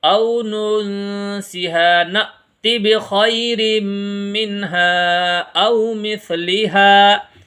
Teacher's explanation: ننسها اخفا کریں گے، او ننسها نأت بخیر منها او مثلها، یہاں پر جھٹکا لگائیں گے کیونکہ حمزہ ساکنہ میں جھٹکا لگتا ہے